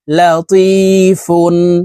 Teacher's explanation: লা ত ইয়া জের তি লাতি ফা দুই পেশ ফুন লাতিফুন তানভীনের পরে ইজহারের হরফ খ আসছে এই কারণে তানভীন ওয়ালা ফাকে গুন্নাহ ছাড়া স্পষ্ট করিয়া পড়বো